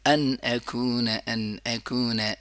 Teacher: ان اکون نہیں پڑھیں گے بلکہ ان اکون. ان اکون، ان اظہار بھی بہت صاف کریں گے اور آ بھی بہت صاف، بہت زیادہ صاف، بالکل گلے کے نیچے والے حصے سے لے کے آ جائیں گے